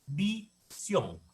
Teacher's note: Sion es la sílaba tónica.